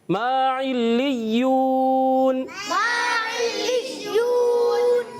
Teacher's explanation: میم الف زبر ما ایک الف کھینچ کر ادا کریں گے، حرف مدہ ہے۔